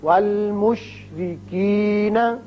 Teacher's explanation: یہاں را کے نیچے زیر ہے، اس لیے اس کو باریک پڑھیں گے.